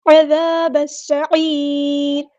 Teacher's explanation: عین کو مستحلق یعنی مڈل تھروٹ سے ادا کرنا ہے، اور را کو ہم ساکن کر دیں گے.